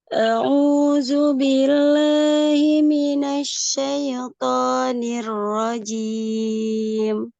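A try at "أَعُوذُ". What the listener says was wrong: Sebentar, untuk huruf za tidak ada sofir ya. A'udzu. Tidak zu. Nah, itu hati-hati ada sofirnya.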